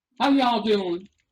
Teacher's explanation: You wanna like you wanna lengthen the last syllables a little bit, and you wanna talk in a slightly higher pitch